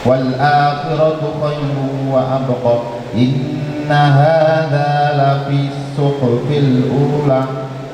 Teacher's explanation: Ini hadza ini dua harokat, haknya dua harokat, zalnya juga dua harokat.